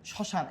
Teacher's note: আমার ম উচ্চারিত হয় নাই, কিন্তু আংশিক নাসিক হয়ে আমার কি হয়েছে চন্দ্রবিন্দু হয়েছে।